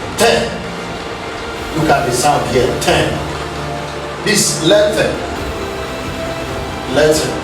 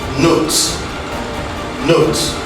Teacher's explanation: the tip of the tongue is in contact with our alveolar ridge, and this contact obstructs the flow of air. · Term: ta sound